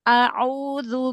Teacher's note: Jadi langsung a'u dhamma pada ain monyongkan lagi.